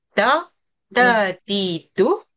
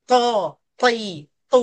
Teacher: To dengan dia ada sifat tebal dia tu namanya isti'la, sifatnya tu kita kena sebut dengan tebal. Kalau tak kita tertukar dengan ta nanti.